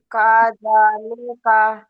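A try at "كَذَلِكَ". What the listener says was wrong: লেকা নয়, লিকা। জি মারুফ পড়ার চেষ্টা করুন, মজুল পড়বেন না। প্রতিটা অক্ষর মারুফ পড়ুন।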